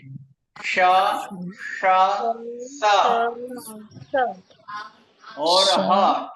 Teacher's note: तालव्य, मूर्धन्य श, दंत स और ह। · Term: उष्माक्षर